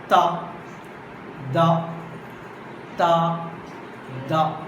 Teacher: This is called tip of the tongue. Okay, so tip of the tongue coming in contact with upper teeth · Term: dental